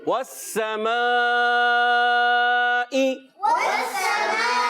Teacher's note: واو کی ادائیگی ہمیشہ ہونٹوں کی گولائی سے ہوتی ہے اور سین کو ہم ادا کریں گے سیٹی کے ساتھ